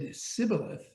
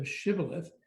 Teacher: distinguish ephraimites whose dialect lacked the sh phoneme